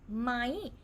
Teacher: Technically, this one we will pronounce as ไหม rising tone, but because Thai changes pretty fast, we don't really say ไหม anymore. We pronounce it as high tone ไหม no matter which way is written.